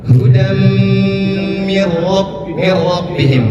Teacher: Hudam itu tanwin bertemu dengan mim, idgham bi gunnah, ditahan.